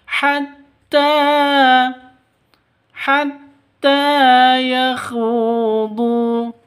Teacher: khu panjang dua ketukan karena ada wau mati diawali dengan damah mad asli atau mad thai.